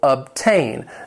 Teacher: It has two syllables. The stress is on that second syllable.